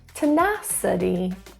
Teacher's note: the stress is in syllable two